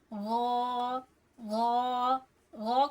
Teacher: ग कहां से अदा हो रहा है? हलक के ऊपर वाले हिस्से से। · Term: गन